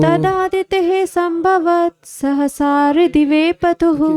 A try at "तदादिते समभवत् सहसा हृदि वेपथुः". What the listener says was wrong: संभव नहीं है, समभवत्। तदादिते समभवत् सहसा हृदि वेपथुः। समभवत्।